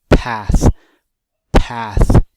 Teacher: when you say path it blows a lot of air out you're holding that P when you open and let that P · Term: aspirated consonants